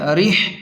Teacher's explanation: را زیر رح، لام زبر ل، را کو زیر کی وجہ سے باریک پڑھیں گے، ہا کو حلق کے درمیان سے صاف نکالیں گے۔